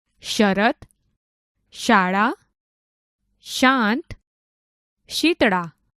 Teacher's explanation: આપણે આ શબ્દો બોલતા હોઈએ ત્યારે શ બોલતી વખતે જીભનો વચ્ચેનો ભાગ ઉપર તાળવાને અડાડીને બોલાય છે.